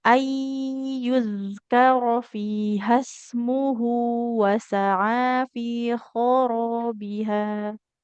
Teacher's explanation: sukun ketemunya idgham bi Ya, gunnah ya. Kemudian huruf zalnya harus mengalirkan suara, jangan terlalu cepat.